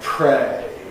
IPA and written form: preɪ (pray)